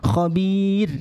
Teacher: ra-nya dibaca tarkik atau tipis karena didahului kasrah